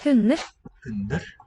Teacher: The D seems to drop out.